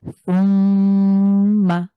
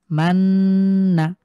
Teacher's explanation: অন্তত ১ সেকেন্ড পরিমাণ আপনি এখানে চাপ দিবেন ইনশাআল্লাহ। মানে গুণনাটা ১ সেকেন্ড পরিমাণ দীর্ঘ করবেন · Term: ওয়াজিব গুণনা